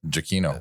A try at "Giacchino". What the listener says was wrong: Oh, not Giacchino. Giacchino. It's wrong and fast. It's on the wrong syllable.